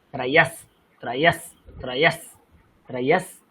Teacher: আপনার উচ্চারণটা তালব্য হচ্ছে ত্রয়স, কিন্তু এখন দন্তস্ব আছে